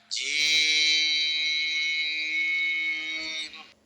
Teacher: এই হরফটি বলতে ৪ আলিফ পরিমাণ লম্বা হবে, জিহ্বার মাঝখান উপরের তালুতে উঠবে, শক্ত সবল আওয়াজ হবে।